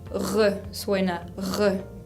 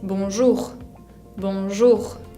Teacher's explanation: Esa R es bien característica del francés y viene del fondo de la garganta. No se hace con la lengua como en el castellano, sino que con la garganta. Tengo que hacer como si estaría haciendo gárgaras o rascándome la garganta o haciendo un rugido.